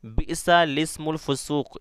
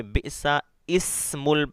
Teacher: اس کلمے میں لام سے پہلے اور لام کے بعد دونوں الف نہ پڑھے بلکہ لام کو زیر دے کر پڑھے